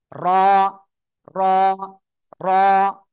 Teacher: আবার বরাবর আবার উপরে তালুর সঙ্গে লাগিয়ে উচ্চারণ হবে কি বললাম জিহ্বার আগার পিঠ তার বরাবর উপরে তালুর সঙ্গে লাগিয়ে উচ্চারণ হবে